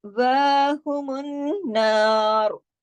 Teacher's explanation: अगर हमने रा की पेश को रोक भी दिया है तो भी हम रा की साउंड को मोटा करेंगे। क्यों? पीछे वाले जबर की वजह से।